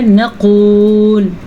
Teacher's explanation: موٹے قاف کا خاص دھیان رکھنا ہے اور واو مدہ کو ادا کرنا ہے